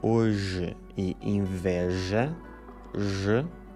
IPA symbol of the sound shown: ʒ